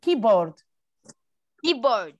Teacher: عملنا استرس على المقطع الأولاني